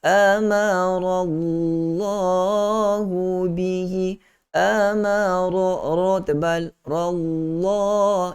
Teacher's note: lam tebal juga lafzul jalalah sebab sebelum dia adalah baris di atas, maka kita tebalkan lafzul jalalah kalimah Allah di situ dengan dua harakat.